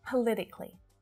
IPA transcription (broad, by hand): pə -'lɪ -tɪ -kli